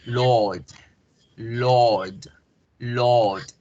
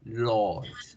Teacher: al alargar la vocal hago el sonido de la R.